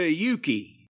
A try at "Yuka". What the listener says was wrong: Yuka. You said Yuki. It's Yuka, not Yuki. Yuka Sakazaki, not Yuki.